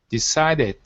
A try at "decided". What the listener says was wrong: Okay, so you're pronouncing a T at the end. You're saying decided.